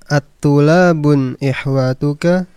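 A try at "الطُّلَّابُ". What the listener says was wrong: Itu di lamnya ada tasydidnya, ya. At-tullabun. At-tullabun.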